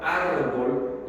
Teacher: En la palabra árbol, la sílaba átona es bol, mientras la sílaba tónica es ar.